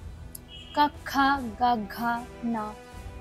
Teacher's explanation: నీ నాలిక పైనఉన్నటువంటి అంగుడు భాగం ఏదైతే ఉందో అక్కడ మాత్రమే టచ్ అవుతున్నప్పుడు కంఠాన్ని ఉపయోగించుకొని శబ్దం బయటికి వస్తుంది.